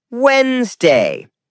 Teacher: Skip the D sound. Natives say Wednesday.